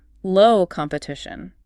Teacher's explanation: Notice the emphasis on the word low.